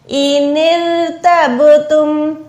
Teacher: रा को बारीक रखें, बा पे कलकला करें।